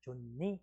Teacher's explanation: 그냥 히웃이 니은을 만나서 니은으로 교체됐다